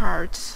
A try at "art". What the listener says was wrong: Okay, she says heart. It's not heart, it's art.